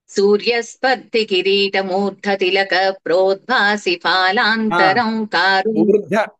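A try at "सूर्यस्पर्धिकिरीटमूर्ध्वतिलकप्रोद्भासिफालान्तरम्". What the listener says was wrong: ఊర్ధ తిలక అంటున్నారు. ఊర్ధ్వ వకారం కూడా ఉంది. ప్రోద్భాసి పిహెచ్ఏ ఫాలాంతరం కదా, మీరు ఎఫ్ఏ చెప్తున్నారు. ప్రోద్భాసి ఫాలాంతరం, నాకు ప్రోద్భాసి ఫాలాంతరం వినపడింది.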